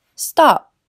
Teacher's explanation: Lo que hacemos es bloquear el aire, cerrando los labios o la garganta, sin soltarla después. Así que solo escucharán “stop”e con la liberación de aire cuando alguien está hablando formalmente.